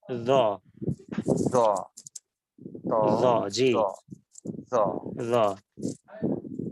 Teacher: আপনি জিহ্বার আগা উপরের দুই দাঁতের আগার সাথে লাগিয়ে উচ্চারণ করুন।